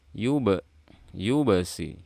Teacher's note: ba sukun qalqalah sughra karena dia di pertengahan, yubasi. Nah, hati-hati agar suaranya enggak kecampur dengan shad atau dimasukkan ke dalam shad.